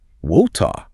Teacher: Right, but the British way, water. There is no R at the end at all, and that middle T is incredibly sharp. It aggressively hits the roof of the mouth.